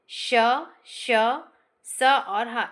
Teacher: वायु ना तो स्पर्श ध्वनियों के समान पूर्ण रूप से अवरोध होता है ना ही स्वरों के समान जो होता है वो वायु के घर्षण के साथ होता है। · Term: संघर्षी व्यंजन